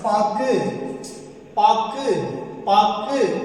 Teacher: படிச்சு பார்க்கும்போது பாக்கு கு அப்படின்னு தான் முடியுது, கூன்னு முடியல. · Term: குற்றியல் உகரம்